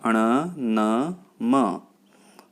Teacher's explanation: ਵਿਅੰਜਨ ਧੁਨੀਆਂ ਪੰਜਾਬੀ ਭਾਸ਼ਾ ਵਿੱਚ 38 ਨੇ। ਸੋ ਅੱਗੇ ਹੈ ਅਨੁਨਾਸਕੀ ਅੱਖਰ ਜਿਨ੍ਹਾਂ ਨੂੰ ਬੋਲਣ ਸਮੇਂ ਆਵਾਜ਼ ਨੱਕ ਰਾਹੀਂ ਆਉਂਦੀ ਹੈ